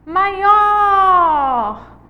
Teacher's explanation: Maior. O or é a sílaba tônica.